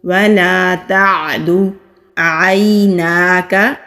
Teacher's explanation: یا ساکن سے پہلے زبر ہے، یا لین ہے، نرمی سے ادا کریں گے